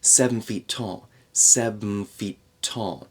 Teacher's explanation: that N and F blend together and it's almost more of an M sound.